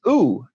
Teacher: important vowel it's ooh spelled with a u in english and it has two salient differences from e one is that it's minus front and plus back right and that it's plus round while e is minus round